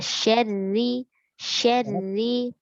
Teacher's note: jadi getarannya jangan terlalu banyak nih. Syar ya, jangan terlalu banyak.